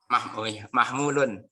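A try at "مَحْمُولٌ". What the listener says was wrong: Iya, mu-nya nanti panjang ya.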